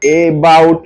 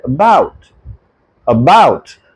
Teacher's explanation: દેશી લાગશે હવે આ બીજો આ એક સિમ્બોલ છે ઊંધો ઈ આને ઇંગ્લિશમાં સ્વા કહેવાય જે આપણા ગુજરાતીનો પેલો અડધો અ છે એવો સંભળાય છે